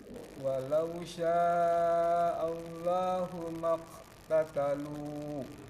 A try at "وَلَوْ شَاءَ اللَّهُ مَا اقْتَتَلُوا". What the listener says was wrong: Kurang terdengar pantulannya. Walau sya'allahu maqtatalu. Maqo.